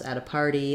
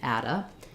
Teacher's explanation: I'm going to use a flap T and it's going to sound more like a d